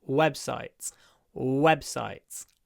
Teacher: it correctly W lower your chin web websites not web web not V but w w with a low chin